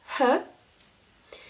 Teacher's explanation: any part of tongue, palate, gum or teeth, or anything But just let the air come out of your throat like when you sigh